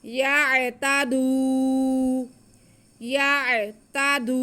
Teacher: دال پہ پیش اور واو ساکن ہے تو یہ واو مدہ ہو گیا، ہم دال کے بعد کو کھینچیں گے۔